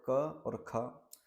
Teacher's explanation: का आभ्यंतर प्रयत्न स्पृष्ट है और खा का भी आभ्यंतर प्रयत्न स्पृष्ट है।